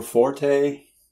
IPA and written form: ˈfɔr teɪ (forte)